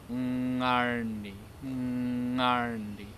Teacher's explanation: put the back part of your tongue up on your hard palate inside the back of your mouth